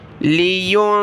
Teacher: لام زیر لی، یا نون پیش یون، ذال زیر ذی، را زبر را. لیونذر، ذال پر زبان نکالنی ہے، نرمی کے ساتھ ادا کریں، را کو موٹا پڑھیں.